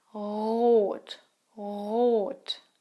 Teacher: In standard German, the R is not rolled.